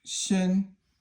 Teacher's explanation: Shen is first tone and it means a body.